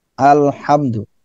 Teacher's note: Dari sisi syiddah dan rikhwah, al itu lam itu bainiyah.